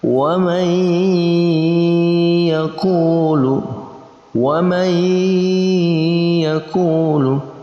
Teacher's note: Ini jelas masuk dalam kategori idgham bi gunnah, yaitu nun mati bertemu dengan ya. Kita baca dengan cara idgham, kita masukkan antara nun mati dan ya, kita gabungkan, lalu gunnah didengungkan.